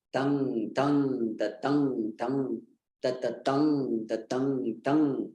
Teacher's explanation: Heavy means guru. Heavy syllable. So that's why you hear there is more weight on it. It is naturally prolonged.